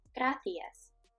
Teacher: In Europe, people would pronounce the word gracias with gracias. So you can hear a TH sound instead of Latin Americans saying gracias.